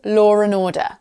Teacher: My accent, for example, law and order may be pronounced as law and order. I've inserted an R sound that isn't meant to be there, but I've put it there because it's easier for me · an R sound is sometimes inserted between two vowel sounds to make the transition smoother. And this is particularly common in non-rotic accents such as received pronunciation or modern received pronunciation. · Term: intrusive R, The intrusive R